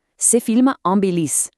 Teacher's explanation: The final consonant of one word just crashes right into the vowel of the next. It creates this total ambiguity that simply does not exist on the page.